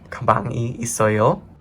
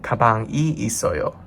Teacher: you want to remember to bring up that tone at the end to make it a question · If you want to say there is a bag here, you just bring the tone down.